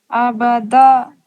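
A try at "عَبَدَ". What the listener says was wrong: आइन निकालिए।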